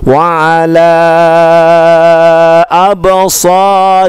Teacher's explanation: la-nya panjangnya sampai, ya boleh sampai 6 huruf ya, lebih panjang